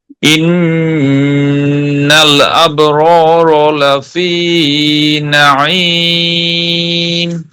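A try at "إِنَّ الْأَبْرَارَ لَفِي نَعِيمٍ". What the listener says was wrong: জি, মাশাআল্লাহ। আবার একটু বলি।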